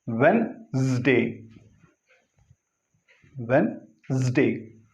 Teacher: Two ways are there. Usually this D is pronounced, but it is to be silent. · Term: D is to be silent